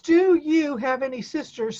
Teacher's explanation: sometimes do and you get kind of combined into one syllable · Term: short weak pronunciation